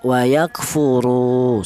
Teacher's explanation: Kemudian di sini ada wa yakfuru, yaitu ada wawu mati, di mana wawu mati ini didahului huruf yang berharokat dhammah, ini dibaca matobi'i polanya ya, ini juga yaitu ada wawu mati yang didahului huruf yang berharokat dhammah dibaca matobi'i, panjangnya 2 ketukan